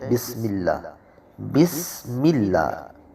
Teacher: سین میں آواز، اس میں سیٹی کی آواز پیدا ہوگی